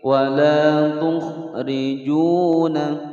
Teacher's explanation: rijuna wawu sukun sebelumnya dhammah mad tabi'i panjang dua ketukan